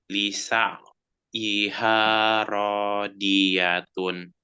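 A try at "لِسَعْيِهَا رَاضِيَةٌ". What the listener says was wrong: Jadi sini sama nih ain ya. Lisa lisa'yiha radiyatun. Sama juga dod, bukan di tapi di, Kalau dibaca di itu dal, bukan dod.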